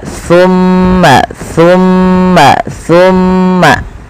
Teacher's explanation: Sa adalah ujung lidah kita nempel dengan gigi seri sambil agak digigit dikit.